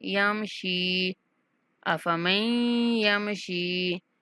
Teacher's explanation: شین کے بعد یا مدہ ہے تو اس لیے یا کو کھینچیں گے